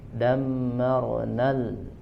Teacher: Tidak panjang, langsung ke lam qamariyah